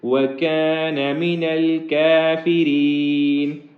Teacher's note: آخر میں را باریک ہوگا کیونکہ اس کے نیچے زیر ہے